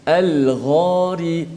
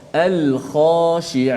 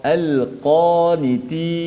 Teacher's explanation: Adapun huruf ghain pada kalimah al-ghari tebal juga, tapi satu je sifat tebal daripada isti'la, ada satu sifat kuat kat situ.